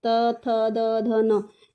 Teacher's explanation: इनको हमारी जो टंग है वो दांतों को टच कर रही है। दांतों को टच करते हुए बोल रही है।